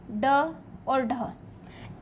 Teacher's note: उत्क्षिप्त वर्णों को बोलने पर यूं लगता है कि वो मुख से फेंके जाते हैं, इसलिए इन्हें उत्क्षिप्त वर्ण या फेंका हुआ वर्ण अर्थात इन्हें ताड़नजात वर्ण भी कहते हैं।